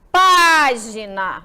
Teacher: se você deve ter percebido que a sílaba pa é pronunciada com mais intensidade que as sílabas Gir e na e que fica localizada na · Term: sílaba tônica